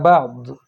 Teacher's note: ضاد ادا کرتے ہوئے زبان داڑھوں سے لگے گی